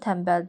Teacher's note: N-dan sonra M və B gələrsə, N M-ya keçir. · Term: M-ya keçmə hadisəsi